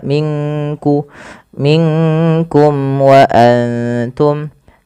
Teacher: Melafal minkum samarkan nunnya ke kaf